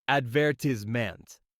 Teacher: in American English is pronounced advertisment with emphasis on the second syllable